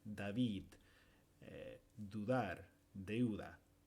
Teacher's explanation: con la d en español normalmente el sonido se produce con la lengua entre los dientes